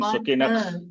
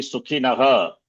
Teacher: Should be Sukhinaha. Visarga should be pronounced.